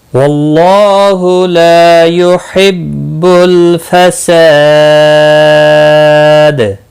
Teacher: فساد، سا الف مدہ ہے، ایک الف کے برابر کھینچ کر پڑھیں گے۔ دال وقف کی صورت میں دال ساکن پڑھا جائے گا، اس پر قلقلہ بھی ہوگا · لا الف مدہ ہے، ایک الف کے برابر کھینچ کر پڑھیں گے